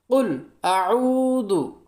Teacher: আইন উচ্চারণ হয় কণ্ঠনালীর মাঝখান হইতে